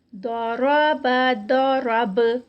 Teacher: ضرب داد موٹا اور را بھی موٹا, با لائٹ. ضرب ضرب اور با پہ جب ہم رکیں گے اس کو تو یہاں پر یہ با بھی ابھی کتب جد میں با بھی آتی ہے تو با کا قلقلہ ہوگا.